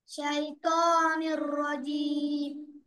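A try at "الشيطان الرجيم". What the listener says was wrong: সেই ত, বুঝতে পেরেছো? শাইতানির রাজিমের ত, তটা মোটা করে উচ্চারণ করতে হয়, ত।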